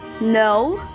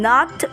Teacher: no has a long o vowel sound and not has a short o vowel sound